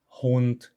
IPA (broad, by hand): hunt